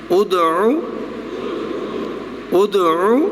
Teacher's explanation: پہلا حمزہ ہے، دال مقلقل اور عین کی آواز نکلے